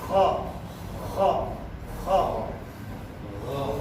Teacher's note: Lidahnya terangkat, bukan menempel langit-langit ya. Hanya sekedar terangkat. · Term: al-isti'la